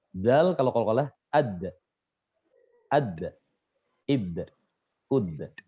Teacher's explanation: Beliau kalau mengucapkan qalqalah ini, itu condongnya ke harokat fathah.